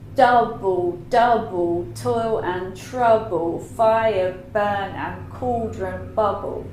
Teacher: You can do stress, unstress, stress, unstress, stress, unstress, stress, unstress, stress, unstress. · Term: opposite rhythm